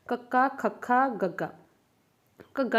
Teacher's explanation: ਇਹਨਾਂ ਦੇ ਵਿੱਚ ਜਦੋਂ ਇਹਨਾਂ ਦਾ ਉਚਾਰਨ ਹੁੰਦਾ ਹੈ, ਇਹਨਾਂ ਧੁਨੀਆਂ ਦਾ ਕਿਵੇਂ ਉਚਾਰਨ ਹੁੰਦਾ ਜਦੋਂ ਆਪਾਂ ਮੂੰਹ ਦੇ ਵਿੱਚੋਂ ਬੋਲਦੇ ਹਾਂ, ਠੀਕ ਹੈ, ਉਚਾਰਨ ਕਰਦੇ ਹਾਂ, ਤਾਂ ਉਚਾਰਨ ਵੇਲੇ ਜਿਹੜੇ ਕਿ ਆਪਣਾ ਜੀਭ ਦਾ ਪਿਛਲਾ ਪਾਸਾ ਹੈ ਉਹ ਆਪਣੇ ਕੋਮਲ ਤਾਲੂ ਨਾਲ ਸਪਰਸ਼ ਕਰਦਾ, ਭਾਵ ਕਿ ਉਹਨੂੰ ਕੋਮਲ ਤਾਲੂ ਨੂੰ ਟੱਚ ਕਰਦਾ ਆਪਣਾ ਜੀਭ ਦਾ ਪਿਛਲਾ ਪਾਸਾ। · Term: ਕੰਠੀ